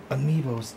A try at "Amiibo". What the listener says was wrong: It's Amiibo. You don't say the S. Amiibo is plural for everyone. Amiibo is plural for everyone.